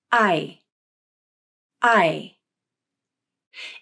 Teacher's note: It doesn't sound like the pure I vowel. The jaw is a little more closed, and the tongue is a little higher in the final sound of I than when the I vowel is said by itself. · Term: diphthong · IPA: /aɪ/